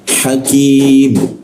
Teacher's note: lidahnya kita turunkan rongga dada terbuka sehingga keluar hembusan